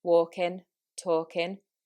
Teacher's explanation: normally when you have the ing at the end, in the Manchester accent, this is dropped